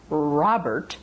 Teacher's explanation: The R, the initial R, is rounded. The tongue is rounded and back.